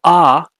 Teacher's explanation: ah is an open vowel or a low vowel because your mouth is mostly open and your jaw is low. Your tongue is low too.